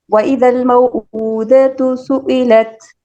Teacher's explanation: سر حمزہ کا مخرج ہے حلق، اقصائے حلق